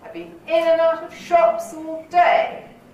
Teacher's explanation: so i've got three stresses